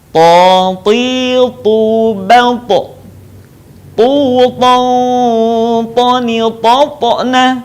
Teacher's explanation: ketika kita melafalkan huruf to dalam keadaan mati, suaranya terdengar memantul.